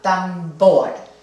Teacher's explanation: la sílaba tónica debería ser la última tambor ahí sí la sílaba acentuada tambor entonces no requiere del